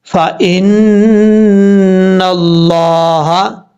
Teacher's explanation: نون کے اوپر شد ہے، غنہ کریں گے ایک الف کی مقدار